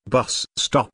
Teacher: bus stop is a compound noun with the main stress on the first word